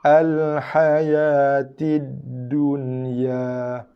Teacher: Ya keluar bunyi daripada tengah lidah menghampiri tengah langit. Tengah lidah menghampiri di langit tengah.